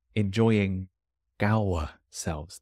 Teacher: The G stays and joins the next word.